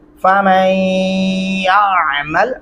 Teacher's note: عین گلے سے ادا کریں گے اور یہاں پہ غنہ بھی کرنا لازمی ہوگا